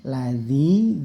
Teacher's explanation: Lamnya ada tasydid yaitu ditekan ya, tidak usah didengungkan di rabbikal tapi singkat saja lamnya, cukup ditekan ladzi.